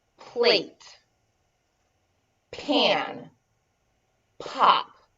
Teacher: and you push the air out plate pan pop now is you will feel that breath on your index finger and it will be pretty strong